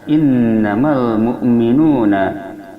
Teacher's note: cara membunyikannya, lamnya dibaca dengan jelas, wajib idhar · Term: alif lam qamariyah